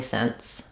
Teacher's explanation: there is a bit of a stopping of the air rather than flowing of the air between the n and the whereas since there's nothing to stop